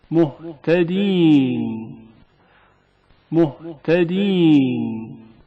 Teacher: ہا کی آواز عادی اور معمولی طور پر حنجرے سے ہوا کے گزرنے کی وجہ سے سنائی دیتی ہے